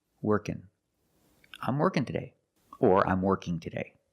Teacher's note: So the NG can make the N sound.